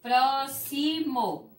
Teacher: A sílaba tônica é o pró.